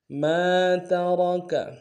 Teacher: میم کے ساتھ الف مدہ ایک الف میں کھینچیں گے ، اور را کو موٹا ادا کریں گے، ما ترک، فإن